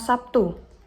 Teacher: Tetapi di dalam dialog Denanti ia mengucapkannya dengan kata P atau Sabtu dengan bertemunya kedua bibir atas dan bawah, di mana terlihat fonem konsonan B berubah menjadi konsonan P sebagai akibat pengaruh dari bunyi T. Jadi, bunyi B adalah bunyi hambat yang bersuara, sedangkan bunyi T adalah bunyi hambat yang tak bersuara. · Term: asimilasi